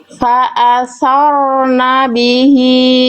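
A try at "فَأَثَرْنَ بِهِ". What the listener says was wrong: Nah, itu agak kebule-bulean ya. Fa'asar. Jelas getarannya kayak yang sebelumnya tuh. Getarannya nggak hilang, nggak samar. Fa'asarna bihi. Fa'asaru. Jangan fa'asar. Fa'asarna bihi. Jadi huruf ro itu jangan sampai getarannya samar-samar teman-teman, tapi jelas, ya. Gak boleh berlebihan memang, tapi juga nggak boleh hilang, nggak boleh jadi samar.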